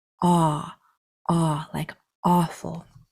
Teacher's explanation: AW is the same sound as AU. It's made with your jaw dropped and a very deep sound comes out.